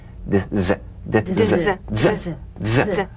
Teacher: The voiced tongue point plus tongue blade consonant. Press the tongue against the upper gum ridge for the D drum beat and peel the tip down a bit as the Z vibrates just before the tongue springs away.